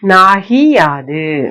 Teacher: அச்சொற்களின் முன்னர் எகரத்தை யாது முதலாக உடைய வருமொழி வந்து புணரும் யாதான் முதல் எழுத்தா இருக்கும். அப்போது நிலைமொழியில் உள்ள உகரம் இகரமாக மாறும்